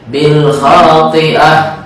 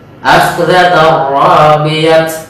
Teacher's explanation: hukum tak marbutah di akhir menjadi bunyi ha ketika dia waqaf di akhir ayat.